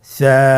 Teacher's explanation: সা হরফটির মাখরাজ হলো উচ্চারণের স্থান জিহ্বার আগা সামনের উপরের দুই দাঁতের আগার সঙ্গে লাগিয়ে উচ্চারিত হয়।